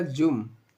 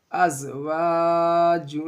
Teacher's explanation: जीम को आपको मीम से मिला देना है, जुन नहीं बोलना है, क्या हो जाएगा, जुम।